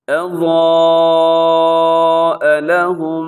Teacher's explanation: اور آگے اضاء لهم، یہاں پر آپ نے کیا کرنا ہے کہ ایک تو حرف ضاد موٹا ہے اور ساتھ الف بھی، وہ بھی موٹا پڑا جائے گا، تو الف اور اس کے اوپر جو مد ہے اسے مد متصل کہا جاتا ہے۔ حروف مدہ حمزہ ایک لفظ میں، آپ اسے 4 سیکنڈ تک آپ نے لمبا کرنا ہے، 4 سے 5 سیکنڈ۔ · اضاء لهم مشوا فيه، اب دیکھیے گا اضاء لهم کے آخر میں میم ساکن ہے، یعنی میم کے اوپر جزم ہے، اور پھر آگے پھر میم آ رہی ہے، تو یہاں پر کیا ہے کہ میم مشدد آپ نے پڑھنی ہے غنے کے ساتھ